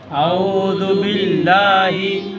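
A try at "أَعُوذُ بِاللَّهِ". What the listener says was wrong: আউযু বিল্লাহি, আউযু যেটা প্রথমে আছে এটা রর পরে জা না, দালের পরে জাল, এটা জিহ্বা উপরে দাঁতের সাথে লাগবে।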